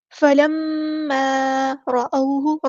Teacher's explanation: را ہمارا heavy letter پورا ادا کریں گے